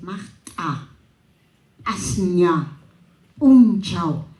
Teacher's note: Hay la glotalización del quechua cusqueño, creo que es una influencia de la aymara